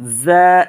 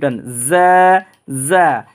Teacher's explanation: জিহ্বার আগা সামনে নিচের দাঁতের আগার সাথে লাগাইয়া মৌমাছির আওয়াজের ন্যায় এই হরফটার আওয়াজ আপনার মুখ থেকে বের হবে